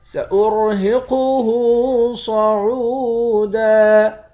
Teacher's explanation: را اور قاف ان دونوں حرف کو موٹا پڑھیں گے، ہا کے اوپر الٹا پیش ہے، الٹا پیش کو ایک الف کے مقدار کھینچ کر پڑھتے ہیں۔ صاد کو موٹا پڑھیں گے، عین کو واو کے ساتھ ملا کر واو کو ایک الف کے مقدار کھینچیں گے، واو حرف مدہ ہے۔